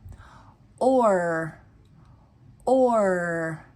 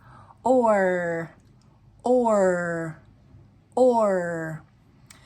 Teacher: Then we have the sound OR, which is going to combine the O with the R sound. And you will start with the O sound and your tongue on the bottom, and then your tongue is going to go up. Or. And when I do the OR sound, my tongue hits my top teeth.